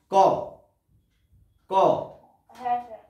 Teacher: ক ক দেখবে তালুর দিকে, তালু মুখবিবরের উপরের অংশ, তালুর দিকে, জিভের গোড়ার দিকে, তালুর দিকে কোথাও না কোথাও একটা ধাক্কা লেগেছে। ক, তাই না? ধাক্কা লাগছে, বাধাপ্রাপ্ত হচ্ছে।